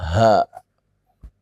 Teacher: Dari tenggorokan yang paling bawah, ha. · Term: ha besar